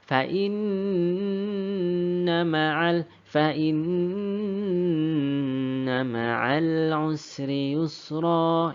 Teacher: Jadi teman-teman ya, cara membacanya kita lamakan. Kita dengungkan kurang lebih 3 harkat. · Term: gunnah musyaddadah